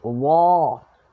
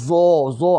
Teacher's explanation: Huruf dha, hujung lidah dikeluarkan sedikit dan mulut kita macam memuncung sikit.